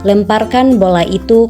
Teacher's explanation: intonasi datar tinggi, terdapat pada kalimat perintah